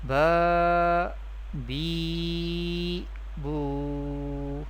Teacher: How we pronounce the vertical harakat in an Arabic accent? We pronounce the vertical harakat by stretching them up to one alif, that is up to two harakat.